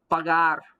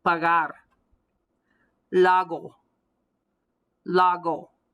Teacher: You're going to hear a hard G, but it sounds like it's coming from the back of my throat. · The back of my tongue, when I say that G, is hitting the back of my palate. It shuts down the sound of the G. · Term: throatal G